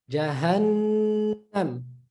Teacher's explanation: Tajweed, however, the meme, noon, which has a shadda, prolong that nasal sound. It's a little longer, right? It's almost like a mad.